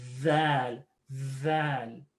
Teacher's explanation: make sure your tongue is out and there's a little bit of a buzz there